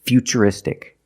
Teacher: the T is pronounced with the ch sound